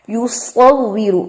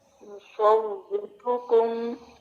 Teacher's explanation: صاد heavy کریں گے اور واو کو تھوڑا سختی سے پڑھنا ہے، اور را پیش کے ساتھ ہے تو یہاں پہ تکرار اور اس کی تفخیم کو تھوڑا انڈر لائن کر لیں.